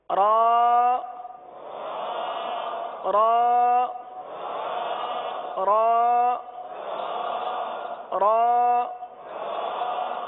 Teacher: را کے لیے زبان جو ہے یہ دانتوں کی تالو کی جانب والے حصے کی طرف مڑتی ہے اور سیدھی ہوتی ہے